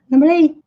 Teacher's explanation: esse T que é bem sutil no final, quase imperceptível